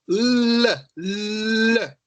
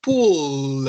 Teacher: Pontinha da língua no céu da boca. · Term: som de L